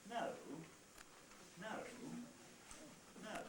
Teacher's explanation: have no choice if we start high we go for high-ish we go down to low and then we come up again within the same syllable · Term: fall rise